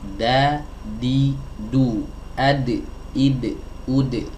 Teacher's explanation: Nah, ini dia teman-teman, ya makhraj huruf dal dan juga huruf ta sama ya, huruf dal dan huruf ta makhrajnya sama, yaitu ada di taraful lisan ma'a usuli tsanayal ulya. Ujung lidah bertemu dengan pangkal gigi seri bagian atas.